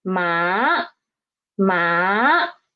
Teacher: the pitch is rising up rising up from 3 to 5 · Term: second tone